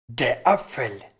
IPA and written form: deːɐ̯ ˈapfəl (der Apfel)